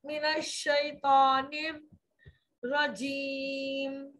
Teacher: मीम की आवाज में होठों को मुकम्मल मिला देना है